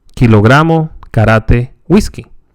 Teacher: the ca is not aspirated in spanish